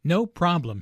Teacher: The receptionist laughs first, then puts emphasis on no by lengthening the word.